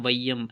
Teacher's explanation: ஐகாரம் சொல்லில் முதலில் வரும்பொழுது 1.5 மாத்திரை அளவில் ஒலிக்கும். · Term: ஐகார குறுக்கம்